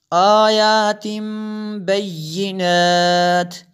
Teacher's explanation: تنوین کے بعد با ہے، یہاں پہ انقلاب ہوگا. آیات بینات، جیم وقف جائز کی شارٹ فارم ہے.